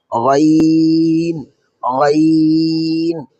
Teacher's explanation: পড়ার সময় গলার ভিতর একটু গড়গড়ে আওয়াজ হবে। এই গড়গড়ে আওয়াজটা যখন হবে তখনই আপনি বুঝতে পারবেন গইনটা সঠিক উচ্চারণ হচ্ছে।